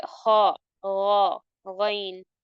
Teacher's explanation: मुंह को हम उसकी आवाज से भर देते हैं। जैसे ख गन और जबान के पीछे पिछले हिस्से को ऊपर उठाते हैं। इससे ये लेटर्स हैवी हो जाते हैं। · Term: हैवी लेटर्स